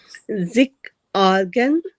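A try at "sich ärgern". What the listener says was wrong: Not zik, zish, ärgern.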